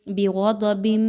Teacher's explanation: غین اور ضاد دونوں کو خوب موٹا کر کے پڑھیے، باریک نہیں پڑھنا، حروف مستعلیہ میں سے ہے۔